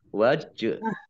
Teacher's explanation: Jim sukun, bacaan kolkolah, dibaca memantul, ditampakkan pantulannya. Wajhillah. Nah, lamnya, Allahnya dibaca tipis karena harokat di depannya kasroh.